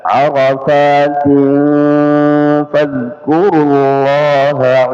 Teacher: tanwin arafatin ketemu fa ikhfa ya, jadi bukan hanya sekedar disamarkan tapi ya didengungkan. Arafatin fadhkurullaha inda ya, nun sukun ketemu dal ikhfa indal mash'aril haram ya, al mash'ari kemudian al haram ra-nya tebal al haram wadhkuruhu kama hadakum wa in kuntum min qablihi laminadh dhallin.